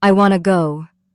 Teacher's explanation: we stress the words want and go. I and to are said very lightly. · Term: word stress